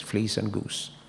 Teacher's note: It's difficult to hear the difference very, very clearly, because these vowels in these contexts are very brief, very short, because of the S at the end in both cases